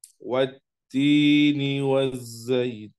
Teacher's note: alif lam yang memang dia dibaca tidak jelas atau langsung masuk kepada huruf berikutnya karena dinamakan idgham, ya. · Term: alif lam syamsiyah